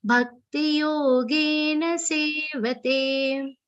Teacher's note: Yogen sevate makes the na sound half. It has to be a complete na sound.